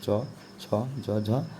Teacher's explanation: तो जीभ का संपर्क जो है तालु से होता है, इसलिए वह तालु का स्वर हो गया